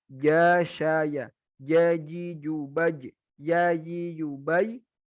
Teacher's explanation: Tengah ya. Jadi tengah lidah nempel ke langit-langit atas.